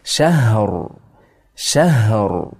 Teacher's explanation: ro harf sukun bilan qilganimiz uchun yo'g'on aytiladi.